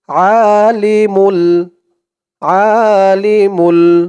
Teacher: আ বলা যাবে না বলতে হবে কারণ এখানে আরবিতে হচ্ছে আইন আইনের উচ্চারণটা গলার ভিতর থেকে শক্ত হয়ে আসে